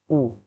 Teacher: پیش ہونٹوں کو گول کر کے ادا کریں